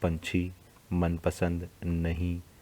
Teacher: बच्चों इन शब्दों का उच्चारण नाक से किया जाता है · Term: अनुस्वार